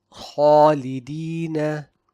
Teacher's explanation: So when I recite Khalidina, the heaviness of the letter Kha automatically extends to the sound of the Alif Madd that follows it without any additional effort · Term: Tafkheem